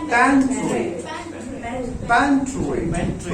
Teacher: सो पैन पे जोर देना है